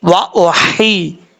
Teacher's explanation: آپ نے ایسا نہیں کرنا، کیونکہ یہ جو ہا ہے یہ ہا بریک ہے، اور یہ ہا جس حلق سے ادا ہوتی ہے اس حلق کا تعلق منہ کی طرف ہے، سینے کی طرف نہیں ہے، اس لیے اس کو بھاری ساؤنڈ کے ساتھ نہیں پڑھیں گے، بریک پڑھیں گے۔